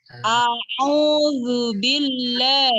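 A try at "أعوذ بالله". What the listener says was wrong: huruf hamzah nya nggak boleh condong ke ini karena dia itu beda makhroj harus keras dikerasin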